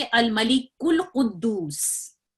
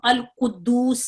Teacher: जब हम इसको मिला के पढ़ेंगे तो ये अलिफ जो है ये अपनी हैसियत खो देता है, इसको नहीं पढ़ा जाता। इसको हम पढ़ेंगे अल मलिकुल कुद्दूस, और ये अलिफ साकित हो जाता है, यानी पढ़ने में नहीं आता। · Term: हमजतुल वस्ल